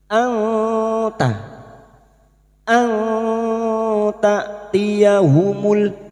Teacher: kita samarkan bunyi nun sukun dan mendengung selama tiga harakat maka pada saat menyamarkan bunyi nun sukun kita siap-siap menuju itu pada huruf ta. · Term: ikfa hakiki